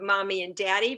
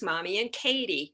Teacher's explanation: the n and the d together um the tongue is in virtually the same spot in your mouth